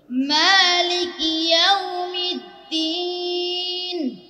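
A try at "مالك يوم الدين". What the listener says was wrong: দিন নাকে যায় কেন? দিন, এটা আবার বলো মালিকি,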